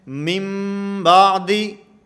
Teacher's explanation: یہاں اقلاب کا معنی کہ نون کو میم سے بدل کر پڑھیں گے، نون کو میم سے بدل کر پڑھا جائے گا۔